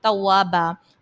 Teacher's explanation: اور توابا میں الف سے پہلے پھر زبر ہے، الف مدہ. اور دو زبر کی تنوین کو ہم ایک الف سے بدل دیں گے،